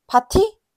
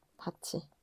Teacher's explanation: 디귿티귿이 모음이나 반모음 이를 만나면 지읒, 치읒으로 바뀌는 구개음화라는 게 있거든요